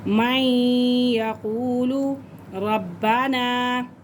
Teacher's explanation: مد منفصل ہے، اور مد منفصل 3 سے 4 الف کے برابر کھینچ کے ہم پڑھتے ہیں۔ ربنا، حمزہ کھڑا زبر آ، یہ 1 الف کے برابر کھینچ کے پڑھیں گے۔